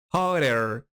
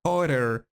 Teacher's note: Incluso puede pronunciarse hotter, porque la doble T recuerda que suena como una R